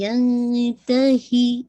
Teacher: ہی کی کسرہ شارپ رکھیے گا، لائٹ اخفا کیجیے گا جو کہ کامل جسے کہا جائے غنہ ہے.